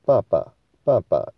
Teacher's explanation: 第一个音就是像第八声一样是高的爸，那第二声呢就是像四声比较低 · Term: 入声音